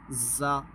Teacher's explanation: پھر تیسرا یہ ہے زال، زا اور لا، یہ تینوں بھی ایک جیسی آواز والے نکال دیتے ہیں، حالانکہ اس میں سیٹی نکلے گی، زا۔ اس میں زبان کی جو سرا ہے وہ اوپر کے دانتوں کے اندرونی کنارے پر لگے گا